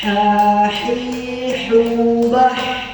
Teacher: ketika kita mengucapkan huruf ha maka dia harus berasal dari tengah tenggorokan ha hi hubah Nah Dia berasal dari tengah tenggorok Tengah tenggorokan